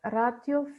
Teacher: и во ратио е кратко, затоа што по него има друг вокал, односно О. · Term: кратко по позиција